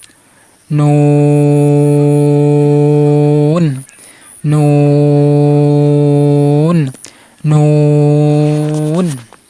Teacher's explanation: নুন হরফ উচ্চারণের সময় নুন হরফ জিহ্বার আগা তালুর সাথে লেগে উচ্চারণ করবেন। জিহ্বার আগা তারপর উপরে তালুর সাথে লেগে উচ্চারণ করবেন।